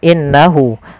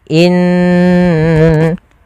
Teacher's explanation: tapi ditahan dulu gunnahnya, dimasukkan ke rongga hidung kita